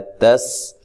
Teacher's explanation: سین کو باریک سیٹی سے ادا کرنا ہے